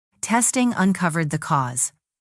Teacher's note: Stress testing and cause.